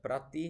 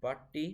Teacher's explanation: One example I have here is the word prati, which turned into patti. We can see here that the R vanished